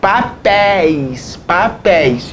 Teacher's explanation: então aqui oxítona com ditongo aberto